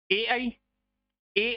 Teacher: कंठ तालवी से बोले जाते हैं, यानी इसमें तालु और कंठ दोनों का योग रहता है